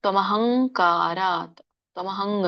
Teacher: ಹ ಮುಂದೆ ಅನುಸ್ವಾರ ಇರೋದ್ರಿಂದ ಕ ವರ್ಗದಲ್ಲಿ ಇರುವಂತಹ ಅನುಸ್ವಾರ ಏನಿದೆ ಂಗ್. ಹಾಗಾಗಿ ತ್ವಮಹಂಕಾರಾತ್, ತ್ವಮಹಂಗ್ ಅಂತ ಬರುತ್ತೆ, ತ್ವಮಹಂಕಾರಾತ್ ವ್ಯಂಜನ ಇದೆ.